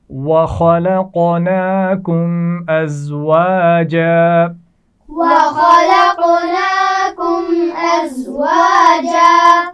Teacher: ازواجا زا کی آواز میں سیٹی ہوتی ہے